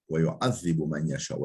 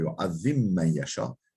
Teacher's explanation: Fel ba'u tudgamu fil mimi ba mimde idgam edilir